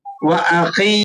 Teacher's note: وَأَخِي یا ساکن ما قبل مقصور، یہ یا مدہ ہے، اس کو آپ نے ایک حرف کے برابر کھینچ کر پڑھنا ہے